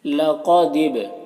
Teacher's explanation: یہاں پر با میں قلقلہ ہو رہا ہے، با میں قلقلہ کریں گے۔ قلقلہ اس طرح سے کریں گے کہ با کی آواز ٹکرائے گی اپنے مخرج سے اور اس کی آواز ڈبل نکلے گی۔ با میں ساکن حرف ہے تو پیچھے والے متحرک حرف دال سے مل کر پڑھا جائے گا، الف کو نہیں پڑھنا ہے۔